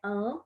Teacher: Uma é vogal, o A nasalizado, né? An, e tenho a semivogal, que é o O com som de U.